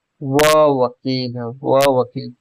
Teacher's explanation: दंतोष्ट क्या है? ऊपर के दांत प्लस निचला होठ